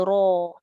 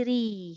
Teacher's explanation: Maknanya ra tu asalnya istifal, rendah pangkal lidah, tapi bila dia baris atas dia jadi ra, tebal. Baris depan dia jadi ru, tebal. Baris bawah dia jadi ri, nipis.